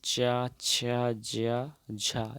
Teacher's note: बिल्कुल, यहाँ पे च, छ, ज, झ ये स्पर्श संघर्ष, ये स्पर्श के साथ थोड़ा संघर्ष के साथ बोला जाता है